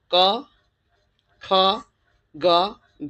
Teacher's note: अब आप ये देखेंगे कि जो स्पर्श व्यंजन नाम पड़ा है इसका, इन 5 वर्ग वालों का, ये स्पर्श व्यंजन नाम इसलिए पड़ा है क्योंकि जो आपने पहले वाले क, ख, ग, घ ना पढ़े हैं, ये तो है कंठ है। ये कंठ को स्पर्श करके निकलते हैं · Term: कंठ्य